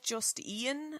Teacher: Dublin people do stick in an extra vowel when they're not meant to be at all